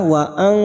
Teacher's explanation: Nun sukun bertemu ta ikfa hakiki kita samarkan dan mendengung selama 2 atau 3 harokat.